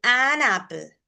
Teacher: So like an apple, we are linking an apple. So there's no gap between an and apple. So when this happens, this is called catenation.